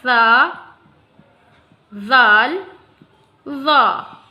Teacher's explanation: ठीक है, अब हम ज़बान की नोक और दांतों की नोक पे आते हैं। जब हम ज़बान की नोक दांत की नोकों पे रखते हैं तो वहाँ से अदा होता है सा, ज़ाल, ज़ा।